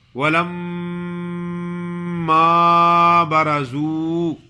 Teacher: میم مشدد ہے، جب میم مشدد ہوتی ہے تو اس پہ غنہ بھی ہوتا ہے۔ غنہ کی معنی ہے ناک میں آواز لے جانے کو غنہ کہتے ہیں۔